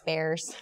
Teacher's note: draws out a lot of vowel sounds a lot of Midwestern accent draws out vowel sounds and makes them a little higher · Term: Chicago accent